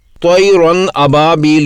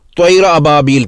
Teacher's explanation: نون کی آواز کو بالکل ہی ختم کر دینا، جیسے طیرن ابابیل کو طیر ابابیل پڑھنا۔